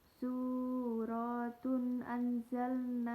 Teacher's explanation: huruf ra dibaca takhim atau tebal karena berharokat fathah